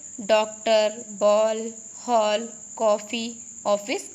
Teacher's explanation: इसका उच्चारण आ तथा ओ के बीच की ध्वनि के समान होता है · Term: आगत ध्वनि